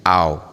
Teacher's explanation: kalau sebelumnya Fatah enggak jadi panjang tapi jadi diptong